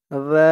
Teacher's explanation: জালের উচ্চারণটা একদম নরম পাতলা করতে হবে, জিব্বার মাথা উপরের দাঁতের মাথার সাথে লাগবে জালের উচ্চারণটা করার সময়।